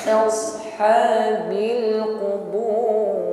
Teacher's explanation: Selain tebal, sad ini juga masih mengalirkan bunyi desis yaitu shafir. Tebal namun berdesis. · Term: sad sukun